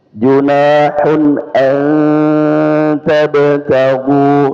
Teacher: nun sukun ketemu ta ikhfa ya berdengung ya